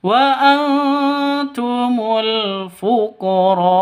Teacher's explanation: Hamzahnya disukunkan karena waqaf seperti itu.